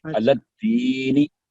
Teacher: علی الدین لام کو دال کے ساتھ ملائیں